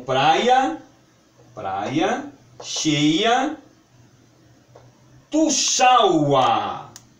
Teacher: desenvolve-se um I semivogal, símbolo chamado em gramática iode